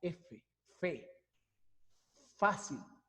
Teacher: vemos la aplicación de nuestros dientes superiores sobre el labio inferior · implica el uso del labio inferior y los incisivos superiores los dientes superiores para la pronunciación del fono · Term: labio dental